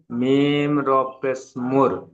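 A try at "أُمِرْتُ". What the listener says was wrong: মিম র পেশ নয়, মিম র জের আছে। উমির। টান দেওয়া নিষেধ, হামজার উপরে পেশ এসেছে, পেশটি হারাকাত, হারাকাত তাড়াতাড়ি পড়তে হয়, টান দেওয়া নিষেধ।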